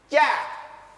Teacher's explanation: Kalau ja, tengah lidah menempel kuat di langit-langit. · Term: huruf tengah lidah